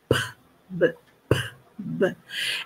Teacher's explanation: eu tenho as bilabiais que são b, elas são explosivas